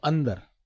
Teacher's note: अ के बाद एक न की ध्वनि बोल रहा हूं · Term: अनुस्वार